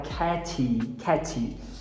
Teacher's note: A gente que é brasileiro também tende a colocar um I epentético depois do T e falar catty.